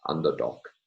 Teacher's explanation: realized with a voiceless stop and pronounced as something like underdog, with application of word final obstruent devoicing